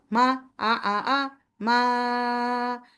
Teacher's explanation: মাদ কখনো ন্যাজালাইজেশন হবে না, মাদ অলওয়েজ জাউফ থেকে আসবে, মাদ কখনো হালকে যাবে না।